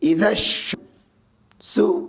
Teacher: حروف شمسی کے 15 حرفوں میں سے شین ہے، اس لیے الف اور لام کو نہیں پڑھیں گے، صرف شین کو پڑھیں گے. حمزہ زیر ای، ذال شین زبر ذش، اذش شین میم زبر شم، سین پیش سو، اذش شم سو.